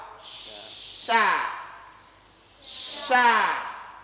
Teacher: Kalau sya, dia tidak terlalu menempel. Yang harus ada ruang, tapi sempit ruangannya. Ketika dia keluar. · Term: huruf tengah lidah